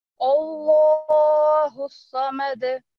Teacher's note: अपने होंठों को गुलाई मिलाते हुए इसको अदा करेंगे तो ये खुद ब खुद इसकी जो आवाज है वो मोटी ही आएगी